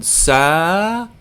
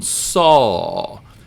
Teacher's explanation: what an emphatic consonant does is it lands a little more heavily and it also lowers the pitch of the vowels around it